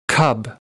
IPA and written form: kʌb (cub)